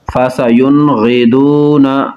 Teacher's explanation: نون ساکن کے بعد غین حروف حلقی ہے تو یہاں پر اظہار ہوگا